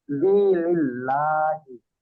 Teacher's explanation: আল্লাহ শব্দের লামের আগে জের এসেছে, তাই উম, আল্লাহ শব্দকে বারিক মানে পাতলা করে পড়তে হয়।